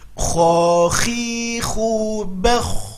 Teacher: dia harus mengalir ketika sukun, ya, harus mengalir ketika sukun karena dia sifatnya rokhwah. Kho khi khu bakh, ngalir. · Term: huruf kho